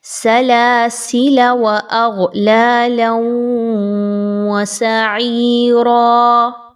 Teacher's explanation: لام کی زبر کو پڑھنے کے بعد الف کو سکپ کیا اور فوراً سے واو کی زبر کی ادائیگی کی۔ لیکن اگر آپ یہاں پر اپنا سانس اور آواز توڑ رہے ہیں، رکنا چاہ رہے ہیں، تو اس صورت میں اس الف کو پڑھا جائے گا۔ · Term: وصلاً